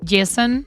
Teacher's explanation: The emphasis is on the first syllable.